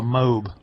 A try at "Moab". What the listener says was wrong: You don't pronounce the A in it?